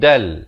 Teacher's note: di sini tanwin bertemu lam, masuk tanpa dengung